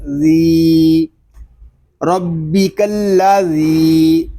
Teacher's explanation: ذال، یا زیر ذی، ربی کلا ذی۔ ذال کو ہم ایک الف تک کھینچ کر پڑھیں گے کیونکہ یہاں پہ یا مدہ ہو رہا ہے، یا مدہ اس لیے ہو رہا ہے کہ یا ساکن سے پہلے زیر آ گیا ہے۔